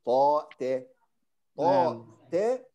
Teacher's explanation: انحباس الصوت أو انحباس الهواء المفاجئ يعطي انطباع أن هناك همزة